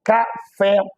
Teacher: Triângulo, palavra proparoxítona, sempre que a palavra for proparoxítona, ou seja, antepenúltima sílaba tônica, ela deve ser acentuada, a acentuação correta de triângulo. Café, última sílaba tônica, palavra oxítona, sempre que for terminada em A, E, O, seguidos ou não de S.